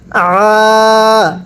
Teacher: আইন খারা জবর আ, গলার মধ্যে চাপ দিয়ে পড়বেন